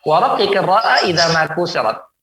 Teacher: Jadi huruf ra ketika kasrah ditipiskan